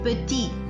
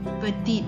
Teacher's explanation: in the masculine singular form we will not pronounce the consonant T at the end. It will remain silent.